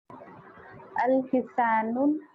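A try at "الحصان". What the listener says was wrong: Al cannot have tanween.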